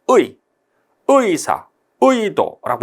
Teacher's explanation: 단모음 으로 시작해서 반모음 이로 끝나는 경우는 의죠